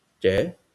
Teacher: the White Hmong cognate would be tsev, so with a rising tone.